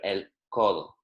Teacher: So the vowels sound stronger, but the consonants sound softer. So instead of saying codo, like with a very k kind of forceful C, it's good to make it sound softer, el codo. Colo.